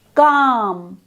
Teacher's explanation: This is therefore a back vowel sound. The highest point of tongue elevation is towards the back of the mouth, below the soft palate.